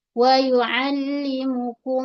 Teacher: idgham syafawi mim mim dengan dua harakat